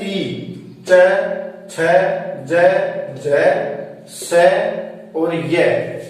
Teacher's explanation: इनका उच्चारण स्थान होता है दोस्तों तालु, तो इनको तालव्य बोलते हैं